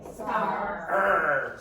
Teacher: in Ireland we pronounce the R. In England they don't. Australia they don't.